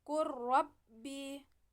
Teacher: cara membacanya dilebur ke huruf berikutnya tanpa ditahan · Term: idghom mutaqorribain